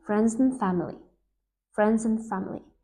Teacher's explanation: And becomes n or in or just n, as in friends and family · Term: connected speech